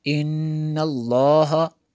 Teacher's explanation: نون میں شدد ہے یہاں پہ اس لیے غنہ کیا